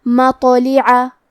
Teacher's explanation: کلمت مطلع میں حرف الطا حروف التفخیم میں سے ہے، تو ہم طا کو بھاری آواز میں پڑھیں گے، اور کیونکہ اس پہ جزم ہے لہذا ہمیں طا کو قلقلہ سے پڑھنا ہے، اور قلقلہ کا معنی ہے حرف ساکن کو ہلانا، تو ہم طا کو ہلاتے ہوئے یہ کلمہ کو پڑھیں گے مطلع۔